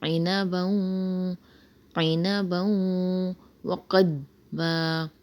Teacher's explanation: عین کی آواز نکالیں، عِنَبًا، عِنَبًا، آگے واو آ رہا ہے دو زبر کی تنوین کے بعد، تو یہاں پر غنہ کریں گے، ادغام مال غنہ ہوگا۔